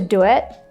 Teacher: we add this really quick w sound